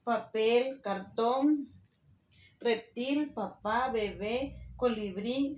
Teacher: son las que llevan el golpe de voz en la última sílaba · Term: palabras agudas